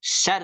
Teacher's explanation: mohon di huruf ro kan tasydidah ada syaddah tuh maka sedikit ditekan ya